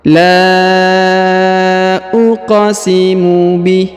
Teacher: Perhatikan huruf la dibaca panjang 5 harokat ya, dibaca panjang 5 harokat karena di atasnya terdapat tanda garis panjang 5 harokat.